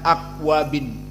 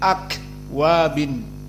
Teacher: dan akwabin kaf sakinah hams. Jangan ditelan akwabin, tapi akwabin.